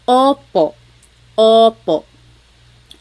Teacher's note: Sometimes I think of it like having a ball in your mouth. Your tongue gets kind of pushed back and down a little bit and the inside of your mouth is open and wide.